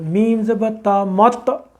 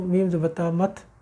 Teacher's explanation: forcefully جہاں سے یہ ہمارے منہ میں سے نکل رہی ہے اوپر کے تالو سے فورسفلی جا کے رکیں گے تو یہ قلقلہ ہوگا